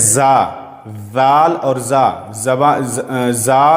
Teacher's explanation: زا پڑھتے ہوئے زبان کو دانت کے اندر رکھنا ہے اور اس میں زگ زگ جیسے آواز آئے گی، تھوڑی سختی سے